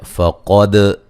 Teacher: دال پہ قلقلہ کریں گے، قاف کو موٹا ادا کریں گے.